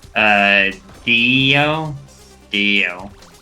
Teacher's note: the best way I can explain it is like S, but with your tongue on your front teeth, but like S, but moved forward.